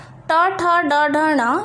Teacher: उसी तरह ट, ठ, ड, ढ, ण, ये सब मूर्धा को स्पर्श करता है